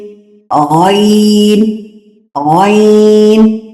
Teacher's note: جو حلق کا بالکل اوپر والا حصہ ہے نا، تو وہاں سے ادا ہوتا ہے غین، غین، غین. ٹھیک ہے، جہاں سے ہم غرارے کرتے ہیں.